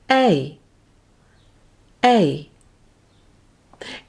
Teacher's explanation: Try this out loud and notice what your tongue is doing. You should notice an upward movement of your tongue as your jaw closes. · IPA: /eɪ/